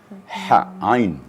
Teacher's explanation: kalau Hamzah bahagian bawah mendekatti Ha tapi kalau Ain itu wastul halaq di tengah-tengah tenggorakan